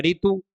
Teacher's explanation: री वर्ण के बनने वाले शब्द का उच्चारण र व्यंजन तथा ई स्वर के संयुक्त रूप से करते हैं